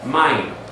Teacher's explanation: So the accent has to go on the first syllable.